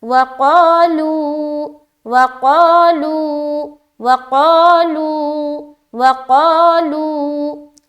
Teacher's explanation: پیش کی حرکت ہے۔ واو ساکن سے پہلے پیش آ جائے تو واو مدہ کا قاعدہ بنتا ہے، وہاں پر ہمیں ایک الف کی مقدار کے باقدر کھینچنا پڑتا ہے۔